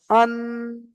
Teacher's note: নুনটাকে আমি নাকের মধ্যে ধরে রাখছি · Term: গুন্না